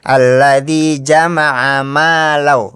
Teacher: Maknya juga harus dibaca panjang 2 harokat. Jangan di idgham bila gunahin ya, jangan dimasukin. Alladzi jama'a malau, bukan jama'a malla ya.